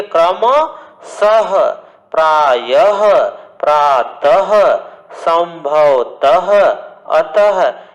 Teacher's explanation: ये विसर्ग में ह का बोध कराता है